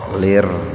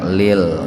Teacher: Lir alif lam samsiyah tarkik ya, atau idgham samsiyah tarkik. Jadi membacanya dimasukkan, diidghamkan ke huruf ro, lir, enggak lil, enggak begitu.